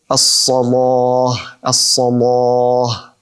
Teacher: Al-Lam al-Mughallazah, which is basically a heavy lam, which is recited by Warsh, where he says, for example, as-salah, as-salah.